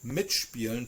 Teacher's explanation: in this case the SP is still a shp sound even though it's not in the beginning of the word